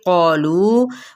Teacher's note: क़ालू पुर पढ़ा जाएगा लू को 4 हरका लंबा कहे